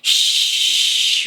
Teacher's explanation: the way you make it in your mouth is you let air out but your tongue is in the way so there's some friction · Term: sh sound